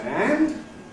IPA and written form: ænd (hand)